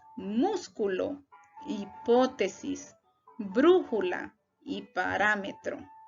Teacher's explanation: Son las palabras que tienen mayor fuerza de voz en la antepenúltima sílaba. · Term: Palabras esdrújulas